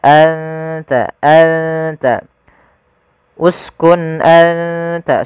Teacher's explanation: ujung lidah menempel dengan gusi atas kita, atau perbatasan antara gusi atas dengan gigi seri atas. Maka anta, anta, uskun anta, sambil ditahan dengungannya 2 harakat. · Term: huruf ta